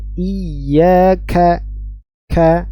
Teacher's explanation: kita bahas pada materi sebelumnya ya Kaf keluar dari bagian e lisan bagian belakang yang menyentuh langit-langit belakang antara yang lunak dan yang keras dan lebih banyak kepada yang keras